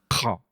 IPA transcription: q͡χ